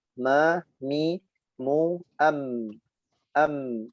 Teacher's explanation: huruf mim itu adalah bainiyah atau tawassut, memanjang pertengahan, seperti huruf ain.